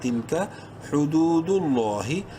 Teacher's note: لفظ اللہ سے پہلے پیش ہے، لام کو بولڈ کریں گے، ساتھ ہی ایک کے برابر لمبا بھی کریں گے